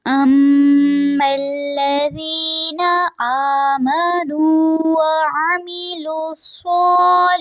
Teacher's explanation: الذین میں زال کو نرمی سے ادا کرنا ہے اور وعامی میں عین کو واضح رکھیں. صالحات میں صاد کو پر رکھیں گے اور ہا میں منہ سے ہوا باہر خارج ہوگی